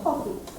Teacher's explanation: Stress on the first syllable.